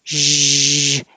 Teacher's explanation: the zh is the same as sh, but with voicing. So you need sound coming from your throat.